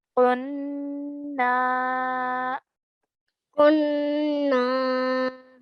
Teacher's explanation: So that makes this an alif madda. So we're going to stretch that sound of the na for 2 counts.